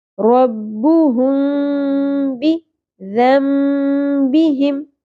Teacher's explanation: میم ساکن کے بعد حرف با ہے تو یہاں پر ہم کیا کریں گے، اخفا مع الغنہ، میم ساکن کی آواز کو ہم چھپا لیں گے